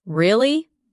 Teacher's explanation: when you ask a question like really, your voice goes up slightly at the end. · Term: rising tone